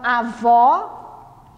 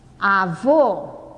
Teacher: eu posso ter acento agudo, que indica que o som é aberto, e posso ter acento circunflexo, que o som indica fechado